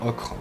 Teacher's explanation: Le O ouvert qu'on a par exemple dans ocre.